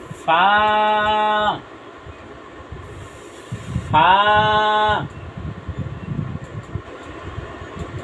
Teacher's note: নিচের ঠোঁটের পেট সামনের উপরে দুই দাঁতের আগার সঙ্গে লাগাইয়া ফা